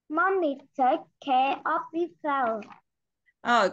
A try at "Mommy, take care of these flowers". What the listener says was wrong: Cô không nghe thì tiếng âm S của con đâu nhé. Tập trung luyện vào âm S của cô nhé. Mommy take care of these flowers.